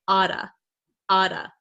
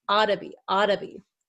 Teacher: in American English you'll hear people say Ada Ada so this this double T here becomes a flap T which sounds like a D sound